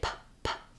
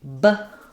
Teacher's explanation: doesn't have uh voicing so when I say PP there's no vibration in my vocal folds versus when I say BB this vibrates here so that's called a voiced sound um so voiced like in